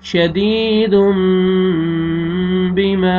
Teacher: یہاں پہ دیکھیں تنوین کے بعد با ہے، آپ نے میم میں چینج کرنا ہے تنوین کے نون کو، اور یہ یا مد ہے، یا جزم سے پہلے زیر، دال کو آپ نے کھینچنا ہے